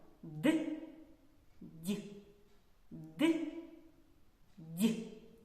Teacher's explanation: при їх вимові повітря затримується глибоко у роті